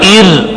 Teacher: اب را ساکن پہلے زیر را باریک ہوگا